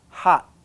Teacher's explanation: We place the tongue, we stop the air, and that's it. We stop there. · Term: unreleased